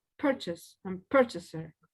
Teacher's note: In the two cases, the stress goes in the first one.